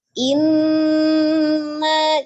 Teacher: nun tasdidnya wajib gunnah ya, ditahan 2 sampai 3